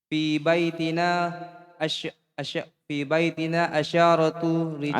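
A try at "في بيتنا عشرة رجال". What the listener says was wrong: Asyaratu pendek.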